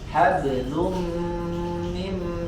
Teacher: Hablum, ba sukun qalqalah hab, kemudian hablun ya, ada dhammatain setelahnya huruf mim ya, maka dia idgham di gunna ya, melebur suara tanwinnya ke huruf mim ya, dan disertai dengan gunna